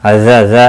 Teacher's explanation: الف مدہ ہے، ایک الف کے برابر کھینچ کر پڑھیں گے